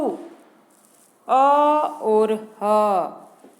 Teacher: अ और ह इनका उच्चारण स्थान कंठ है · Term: कंठ्य